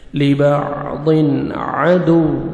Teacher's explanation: تنوین دو زیر کے بعد دیکھیں حروف حلقی میں سے عین آ رہا ہے، یہاں پہ آپ نے اظہار کرنا ہے، جلدی پڑھیں گے